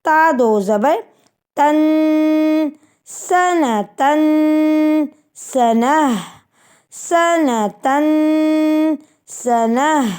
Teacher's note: دو زبر کی ترمیم میں ہم غنہ کرتے ہیں، اور ہم جہاں جہاں دو زبر آئیں گے وہاں پر ہم نے غنہ کر کے ہی پڑھنا ہے.